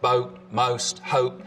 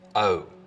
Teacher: the vowel sound in boat, most, hope, starts with the tongue further forwards in the mouth, O. Interestingly, goat fronting, which is now widespread in a lot of the American South, seems to have originated in North Carolina sometime in the last part of the 19th century.